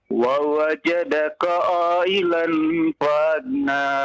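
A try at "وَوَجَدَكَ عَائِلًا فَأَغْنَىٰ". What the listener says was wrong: Panjang ya, panjang. Ya, 5 harokat. Wa wajadaka ailan fa'aghna.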